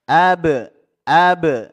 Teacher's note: huruf ba sukun diqalqalah dipantulkan ini Qalqalah Sugra